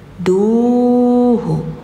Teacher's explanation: du harus panjang karena ada wau setelahnya setiap ada domah ke depannya ada wau maka panjang duhu tilka hududullah Allahus somad.